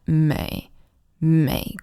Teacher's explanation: always remember to really dip down with that may